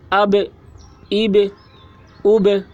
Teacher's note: اور قلقلہ کہتے ہیں یعنی با کو جب پڑھ رہے ہوں تو اس وقت با کی آواز ٹکرا رہی ہو۔